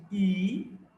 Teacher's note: So we got the first sound we have got is E, is a front closed vowel, said with spread lips